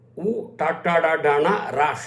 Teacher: నోట్లో ఉండేటువంటి పై భాగమునకు నాలుక తగలడం వల్ల వస్తాయి. The tip of the tongue touches the upper part of the mouth. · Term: మూర్ధన్యాక్షరాలు